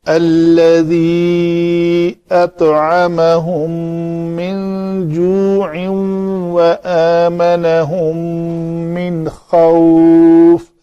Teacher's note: نون ساکن کے بعد خا حروف حلقی میں سے ہے تو نون کا اظہار ہوگا